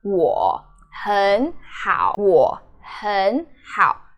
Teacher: 很好 sticks together. So when 很好 together, it's two third tone together. So you change the first third tone, which is 很. · you have to put 很好 together and change the 很 as in the second tone, 很好. You don't do 我很好, because 我很 together doesn't mean anything.